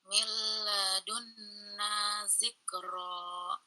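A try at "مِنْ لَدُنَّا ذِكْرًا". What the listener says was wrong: Gunanya lebih ditekankan Bunda.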